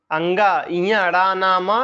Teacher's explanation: ये सब कहां से बोले जाते हैं, ये सब नासिक से बोले जाते हैं।